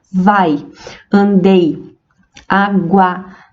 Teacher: As vogais A e I na palavra vai, elas não se separam na separação silábica. Nós pronunciamos em um único esforço de voz. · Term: semivogais